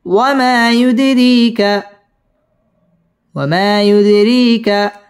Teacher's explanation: দাল কলকলার হরফ এখানে ধাক্কা দিয়ে পড়তে হবে